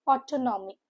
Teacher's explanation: Has four syllables. The stress is on the second syllable.